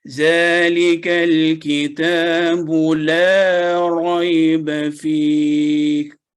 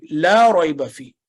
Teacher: لا لمبی آواز میں 2 سیکنڈ تک لمبا ہوگا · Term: مد التعظیم